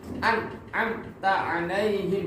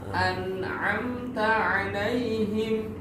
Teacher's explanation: ketika membaca itu disempurnakan nunnya dulu sehingga ketika kemudian langsung disikat ya a-nya. An'amta alaihim jadi nggak putus ya.